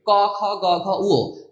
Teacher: আমরা যখন ক, খ, গ, ঘ, উ বলি তখন কিন্তু এই কন্ঠের মাধ্যমে উচ্চারণ করি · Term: কন্ঠ ব্যঞ্জন